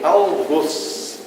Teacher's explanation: Algoz, palavra oxítona cuja pronúncia do O deve ser fechada como arroz